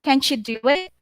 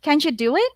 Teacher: T plus Y will be CH.